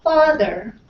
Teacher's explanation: your mouth is open, your tongue is low, but the back is a little bit up